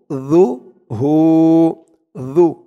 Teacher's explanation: জালের উচ্চারণটা একদম নরম হবে জিহ্বার মাথা ওপরের দাঁতের মাথার সাথে লাগবে